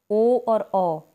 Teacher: ओ और औ के उच्चारण में कंठ ओष्ठ का प्रयोग होता है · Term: कंठोष्ठ ध्वनियाँ